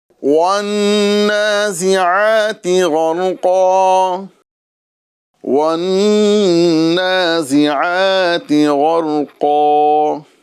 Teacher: غین، را اور قاف، یہ تینوں حروف کو ہمیں پر کرنا ہے